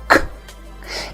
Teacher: Yes, again, C is a letter, it's not a sound, but the sound it produces is k. It's not voiced, which means you do not use your vocal cords. It's like saying the sound while you're whispering.